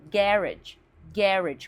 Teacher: Mais no inglês britânico é pronunciada garage. Garage com a primeira sílaba tônica